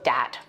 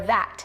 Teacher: using something like a D sound for where you see a written TH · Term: TH stopping